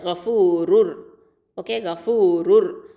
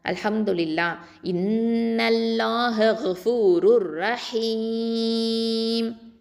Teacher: மீமில் தன்வீன் இருக்கும், அதை வந்து நம்ம வக்ஃபு பண்ணோன்னா சுக்கூன் வச்சு நிப்பாட்டுவோம்